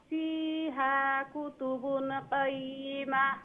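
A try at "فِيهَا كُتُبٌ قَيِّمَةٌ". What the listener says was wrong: ফিহা কুতুবুন গুন্না করবা,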